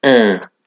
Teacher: They can be very nasal in their pronunciation, almost like you're sort of saying it right at the back of your mouth, almost silent